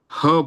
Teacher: ईषद विवृत है, तो इसमें मुंह थोड़ा खुलता है।